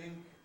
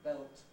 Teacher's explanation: have a voiceless consonant preceded by a nasal or a liquid